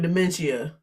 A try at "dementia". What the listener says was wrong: Why do you say it like that? You be pronouncing the fuck out of the end of that word now. Dementia.